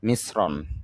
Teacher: তালব্য স এর উচ্চারণ সর মত উচ্চারিত হবে যেহেতু রফলা যুক্ত হয়েছে